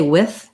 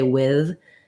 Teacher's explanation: some people pronounce that with a voiceless TH. Many people will pronounce with a voiced TH. Both are correct.